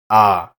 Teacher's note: the German A is somewhere in between the A and bad and the A and father